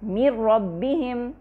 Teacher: من ربہم، پہلا حرف ہے نون ساکنہ، دوسرا حرف ہے را جو کہ متحرک ہے۔ من ربہم، پہلا حرف دوسرے حرف میں اس طرح مرج ہو گیا کہ ہمیں دوسرے حرف کی مشدد شکل مل گئی، را ہمیں مشددہ مل گیا۔ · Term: ادغام